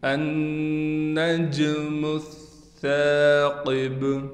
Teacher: النجم الثاقب، سا پر تشدید ہونے کی وجہ سے ٹھہراؤ بھی کیا جائے گا، لیکن سا کو ہم باریک کر کے اور اس کے بعد الف ہونے کی وجہ سے کھینچ کر بھی پڑھیں گے۔ قاف کو موٹا پڑھا جائے گا، با پر وقف کی حالت میں قلقلہ کیا جائے گا۔